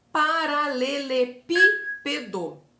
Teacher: posição anti penúltima é proparoxítona lembra disso Olha o exemplo paralelepípedo a palavra paralelepípedo tem como sílaba tônica como sílaba mais forte a antepenúltima sílaba